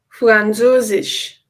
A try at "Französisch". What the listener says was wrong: It is not Französisch, but Französisch. Yes, the German Z can be kind of hard sometimes.